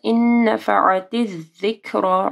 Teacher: نون ساکن کے بعد نون ہے، ادغام آ رہا ہے غنہ کے ساتھ